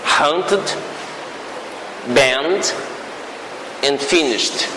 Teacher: The final D in hunted I pronounce ud. In banned, d. And in finished, it's like a t. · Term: allomorphs